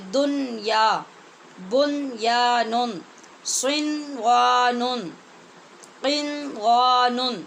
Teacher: ان کلموں کو جہاں بھی آپ نے پڑھنا ہے اظہار کے ساتھ نون پڑھنا ہے۔ اس کو کہتے ہیں اظہار مطلق۔